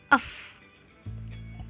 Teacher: termasuk konsonan labiodental dibaca renggang termasuk konsonan kesser atau fricative dan juga termasuk konsonan oral Kemudian